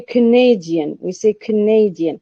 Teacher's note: stress is shifting from the first syllable to the second